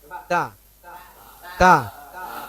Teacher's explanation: Kan ada angin keluar, tapi tidak terlalu kuat. Kuatnya ketika dia sudah sukun, mati.